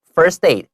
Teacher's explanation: 老 师 会 把 first 跟 aid 连 在 一 起 念